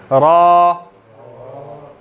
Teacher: वो ज़बान आपने वाइब्रेट करनी है लेकिन रहेगा वो रा ही